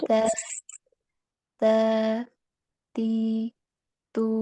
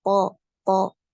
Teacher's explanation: huruf dal dan Ta ini ya ini termasuk huruf yang dibaca tipis sedangkan huruf th ini dia hurufnya dibaca tebal ya caranya bagaimana ya dinaikkan pangkat lidahnya ketika mengucapkan huruf th